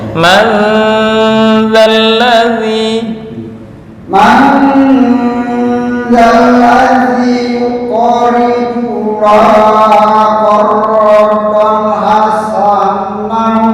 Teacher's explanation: Man dzalladzi dengung di nun ya.